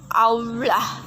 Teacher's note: ciri-ciri rendah belakang bulat. Contoh kata aula.